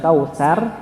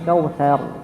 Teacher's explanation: ketika kita baca huruf ra yang sukun, ya, sebelumnya berharakat fathah maka dibaca tebal. Maka lebih baik kita bacanya bukan kausar, beda, ya. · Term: Ditebalkan huruf ra